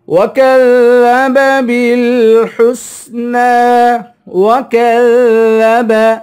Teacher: کاف کو باریک کریں گے، ذال کو نرمی سے پڑھیں گے